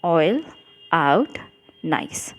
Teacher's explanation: एक vowel sound के साथ में दूसरा वावल साउंड चिपका हुआ है, एक के बाद दूसरा हमको सुनाई दे रहा है. तो ये ग्लाइडिंग है, ग्लाइडिंग वावल.